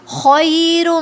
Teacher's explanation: خی نہیں بولیں گے، خوئی بولیں گے، خو جو ہے ہیوی لیٹر ہے